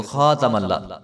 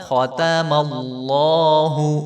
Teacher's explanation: تو زبر کو بالکل بھی لمبا نہیں کرتے۔ ختم تو ختم اللہ، تو خاتم اللہ نہیں پڑھیں گے اس کو، خاتم اللہ۔